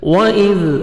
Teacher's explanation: واو پہ لپس کو راؤنڈ میں لے کے جائیں گے, زال کو نرمی سے ادا کریں گے